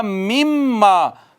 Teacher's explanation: من ما ہو جائے گا مما، یعنی اس کو ڈائریکٹ میم کے ساتھ پڑھیں گے